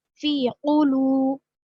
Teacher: قلو کو لام کو ہم تھوڑا سا کھینچیں گے، کیوں؟ واو مد ہے یہاں پر